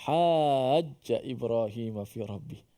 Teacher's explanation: Lazim di sini ialah dengan maksud kita mesti melazimi ataupun mewajibkan, tidak ada kita baca selain daripada itu, iaitu dibaca secara 6 harakat, dibaca secara panjang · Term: mad lazim kalimi musaqqal